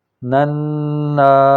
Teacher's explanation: تو یہ آج ہم نے تجوید کا نیا قاعدہ سیکھا کہ میم مشدد ہو یا نون مشدد ہو تو اس پر غنہ ہوتا ہے۔ غنہ کا مطلب ہے کہ نون کی آواز ناک سے لمبی ہو کے ادا ہوگی